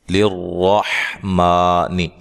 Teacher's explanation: میم کو لمبا کیا جا رہا ہے کھڑی زبر کی وجہ سے. ٹھیک ہے, 1 الف کی مقدار کے برابر اس کو لمبا کیا جاتا ہے.